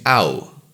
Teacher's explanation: in town you move from a to U producing ow